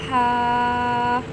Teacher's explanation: ہا کو حلق سے ادا کریں گے اور باریک پڑھیں گے اور تھوڑا سا لمبا کر کے پڑھیں گے۔